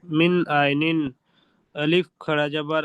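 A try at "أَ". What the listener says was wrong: আলিফ নয়, হামজা খাড়া জাবার আ, মিন আইনিন আ,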